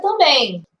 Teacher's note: Já dei um espaço aqui, porque quando a palavra termina em EM, a gente acaba ouvindo o barulho de quem? Do I. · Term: ressoo nasal